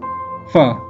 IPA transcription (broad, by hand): f